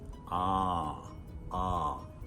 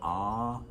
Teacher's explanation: And the sound that most people find really easy, ah. Mouth open, ah, and relaxed.